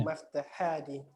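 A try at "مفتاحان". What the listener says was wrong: Maftah atau miftah?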